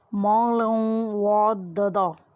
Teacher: لام تنوین ہوگا اس لیے اس کی آواز ناک میں سے آئے گی